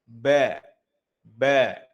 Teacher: Tempat keluarnya atau makhrajnya dari kedua bibir ya. Rapatkan bibir atas dan dan bibir bawahnya. · saat melafalkan huruf ba, hati-hati tidak boleh ada hentakan udara keluar. Ba, ba. Nah, ini juga tidak boleh. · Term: jahar